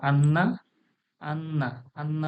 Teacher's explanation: আন্না বলতে গেলে দেখুন নাকে আওয়াজটা যাচ্ছে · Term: নুনের গুন্না, নুন গুন্না